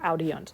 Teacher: you kind of say an I in the front of your mouth, and you kind of say an unt further towards the back. And so the kind of just naturally falls in there.